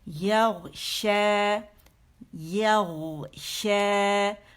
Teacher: زبان کے درمیان کا درمیانی حصہ بالکل اوپر جا کے تالو کے قریب ہو جاتا ہے. ٹھیک ہے, تو شا ادا ہوتا ہے.